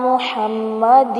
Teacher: محمد کو محمد نہیں پڑھنا، منہ کو مو نہیں بنانا، ٹھیک ہے. میم پیش منہ ہے، میم پیش واو مو نہیں بنانا